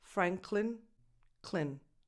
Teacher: This last syllable is unstressed. So that vowel is a schwa, no definition. Just go from cl to n.